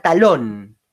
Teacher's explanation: cómo termina en n le colocó la tilde en la o fíjense que la fuerza cae en lo que es la última sílaba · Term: aguda